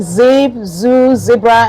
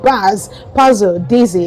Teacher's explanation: the tip of your tongue aiming towards the alveolar ridge, that makes it a voiced fricative alveolar